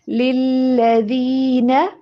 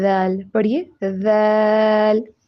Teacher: ذال کو ادا کرتے ہوئے جو سامنے والے اوپر والے دو دانت ہیں ان سے زبان کی نوک کو باہر رکھیں